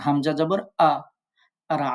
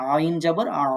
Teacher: হামজা হলকের শুরু থেকে আইন হলকের মধ্যস্থল থেকে আইনটা বলার সময় চেপে ধরে উচ্চারণ করতে হয় হামজা উচ্চারণ করার সময় ধাক্কা দিয়ে উচ্চারণ করতে হয়